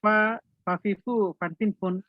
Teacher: উপরের দাঁতে নিচের ঠোঁটে বাতাস চালু